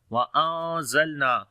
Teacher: After the nun sakin, the next letter is za. We make ikhfa here, which is light ikhfa. We hide the sound of noon into our nose, and we long as well. On the lam we make tawassut quality.